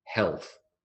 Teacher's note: L and th unvoiced